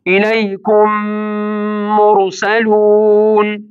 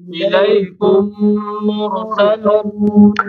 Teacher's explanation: میم ساکن راغلی دی به ترستو بل میم متحرک راغلی دی دا اول میم ساکن به په دویم میم متحرک ور مدغم شي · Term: میم ساکن مدغم فی المیم